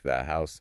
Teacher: The source says it often gets, well, softened or even dropped. Like in British English, maybe a glottal stop, you kind of stop the air.